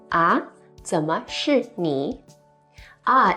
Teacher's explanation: ah ah in the second rising tone is also used as a response when you didn't hear someone